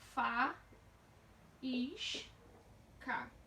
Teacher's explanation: Nós temos um I seguido de S, sendo essa sílaba a mais forte. Se ela é mais forte, ela é a tônica.